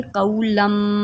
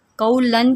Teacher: اب ہم اس کو پڑھیں گے قولم، قولن کی بجائے قولم، ٹھیک ہے، ہم نے کیا کیا، تنوین کو میم سے بدل کر اخفا کیا ہے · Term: اقلاب